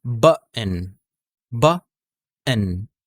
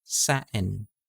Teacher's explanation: So, hindi hindi ko tinataas yung dila natin. Totally wala siyang T sound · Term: glottal stop